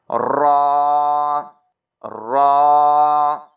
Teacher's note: ज़ुबान की साइड जब ऊपर के दांतों सनाया, रुबाई और अनियाब ऊपर के मसूड़ों को लगे ना, तीनों दांतों के, तो फिर इससे रा अदा होता है और रा को मोटा पढ़ेंगे।